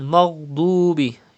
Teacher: you have to pronounce dod with thicker voice, because dod is also a mustalia letter